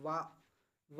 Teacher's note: जब आप बोलेंगे तो आपका जो होठ है वह दांतों से टकराएंगे · वा का जो उच्चारण स्थान है हमारा वह कहां से होता है दांत और ओट से होता है